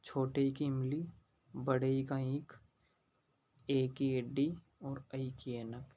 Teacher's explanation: इन स्वरों के उच्चारण में जीभ के अगले वाले भाग का प्रयोग किया जाता है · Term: अग्र स्वर